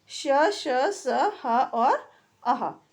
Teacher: बोलने के समय जो हमारी सांस की गति होती है वो मुंह से रगड़ खाती हुई बाहर निकलती है, जिससे कि गर्मी उत्पन्न होती है, इसलिए इसे ऊष्म व्यंजन कहा जाता है।